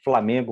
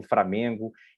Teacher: a troca do que a gente chama de uma lateral e de um TEP num grupo consonantal, né? Principalmente no grupo consonantal, que eu acho que fica mais marcado. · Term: rotacismo